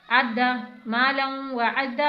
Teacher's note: मालम वाव ज़बर वा मालम व आइन को हलक से अदा करना है। अद्दा आइन को हमजा नहीं बनाना, आइन को आइन की तरह हलक से अदा करके पढ़ना है